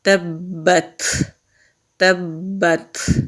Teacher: تا پر سکون ہوتا ہے وہاں پر ہم ہمس کرتے ہیں، یعنی سانس کو جاری رکھتے ہیں۔